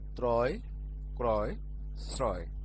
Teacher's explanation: শব্দের শুরুতে রফলা যুক্ত অ এর পরে অন্তস্থ অ থাকলে সেই অ এর উচ্চারণ বিবৃত হয়, যেমন ত্রয়, ক্রয়, শ্রয়।